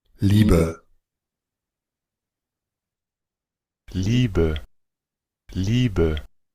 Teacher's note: el diptongo IE, en este caso del idioma Deutsch, lo vamos a pronunciar como una I. Ya, esto viene como una I larga, eso significa, ese colon significa, así se le llama este símbolo, significa un sonido largo, una li, y luego esta BE va a sonar con una ishba.